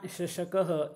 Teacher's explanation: श यदा मम उच्चारणं भवति तदा जिह्वायाः मध्य तालु किंचित स्पृशति यथा शशकः इति शब्दे अतः अहम तालव्यः।